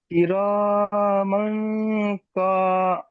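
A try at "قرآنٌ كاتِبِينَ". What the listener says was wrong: ক নয়, কা।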